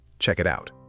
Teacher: That's the classic American flap T jumping into action. · it almost sounds like a single long word with a light R sound in the middle